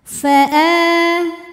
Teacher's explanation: mad badal karena ada Hamzah yang dipanjangkan maka dibacanya panjang dua harakat